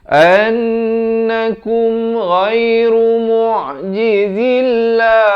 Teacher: An didengungkan 2 harakat, wajibul gunnah di sini.